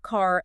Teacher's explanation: In most American English accents, the R sound is fully enunciated, or what linguists call rhotic.